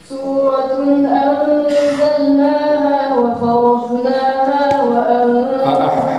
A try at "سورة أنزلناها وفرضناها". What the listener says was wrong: حسبك وفرض خطأ سورة أنزلناها وفرض وليس فرض لا تخرجي لسانك وفرض أم اللغة العربية تسمى لغة الضاد، هي اللغة العربية كلها مختصرة في هذا الحرف أم. الذي يتقن هذا الحرف يستطيع أن يتقن كل الحروف. وفرم أعيدي.